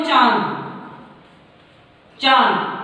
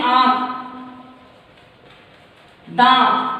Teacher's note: तो चांद में जब हम बोलते हैं तो हमारे मुंह से और नाक से आवाज आती है और ये जो नाक और मुंह से आवाज आती है उसका जो निशान है वो ये है चंद्र बिंदु, इसे हम अनुनासिक भी कहते हैं।